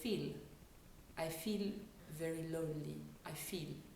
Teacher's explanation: So for a word like sit, they would say sit, sit. Also, when we do long vowel sounds in the word feel, that's a diphthong, feel, the French often cut it short and say feel.